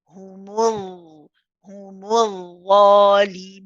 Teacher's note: we do the rakhawa, so prolong it. We've got to make sure the sound continues to flow.